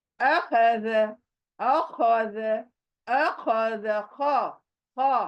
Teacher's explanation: अ सीने के तरफ से, खो हलक के अंदर, और दाल सॉफ्ट वाली, ज ज। अखर, जैसे नीचे से कोई चीज उठाते हो, आवाज अ की सीने की तरफ से आना।